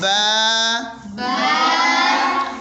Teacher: جب با ادا ہوتا ہے آپ کے دونوں ہونٹ آپس میں مل جاتے ہیں۔